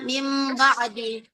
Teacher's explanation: Kemudian setelah itu iklab itu nun mati atau tanwin bertemu dengan ba namun berganti baca bunyi ba itu menjadi mim.